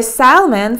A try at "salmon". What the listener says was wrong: You wanted to have salmon for dinner. The letter L is silent.